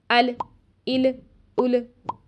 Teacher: जब लाम साकिन होता है तो हम इसकी अदायगी करते हुए टाइम कम देते हैं और जल्दी से गुजर जाते हैं जिसकी वजह से कलकल की आवाज पैदा हो जाती है